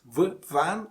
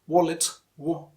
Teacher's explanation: V, van is labiodental, wallet, wo, is bilabial, or you can also call it labio-veal sound.